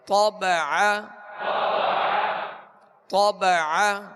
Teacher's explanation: طا کو پر پڑھیں گے اور عین کو درمیان حلق سے ادا کریں گے